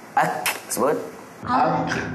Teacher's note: hampir dipangkal lidah di atas sikit daripada qaf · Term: Kaf